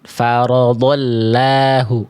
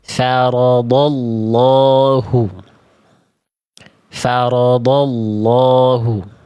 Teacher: Huruf lam pada lafaz Allah ketika didahului oleh huruf berharokat fathah atau dhammah, lamnya dibaca tebal.